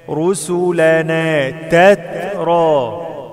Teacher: التاء ساكنة فيها همس